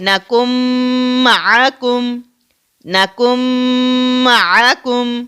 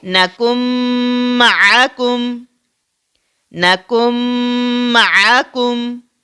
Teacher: نون ساکن کو ہم بالکل ہی ادا نہیں کر رہے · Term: ادغام